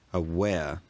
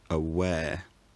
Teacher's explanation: words like aware end with a slight off-glide to the vowel, aware rather than aware.